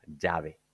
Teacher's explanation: the 20-year-old Paraguayan lady says llave with a Y, llave, like this.